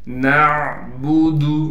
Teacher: نون کو عین سے ملائیں گے، عین کو صاف کر کے اس کے مخرج یعنی گلے کے درمیان سے نکالیں گے، با کو بالکل نہیں کھینچنا، دال کو بھی بالکل نہیں کھینچ کر پڑھنا ہے۔